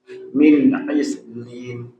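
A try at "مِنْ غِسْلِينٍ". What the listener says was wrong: nah, huruf ghain.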